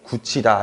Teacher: 그럼 이제 우리가 무슨 현상이 생긴다고 배웠냐면 구개음화라는 현상이 생긴다고 지난 시간에 배웠었죠. 그래서 이 티읕이 나중에 치읒으로 바뀌어서 최종적인 발음이 굳히다 이런 식으로 형성이 됩니다